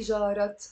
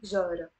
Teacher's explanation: You notice here the te marbuta is silent. I'm not pronouncing it. I don't say جارت, I say جارة.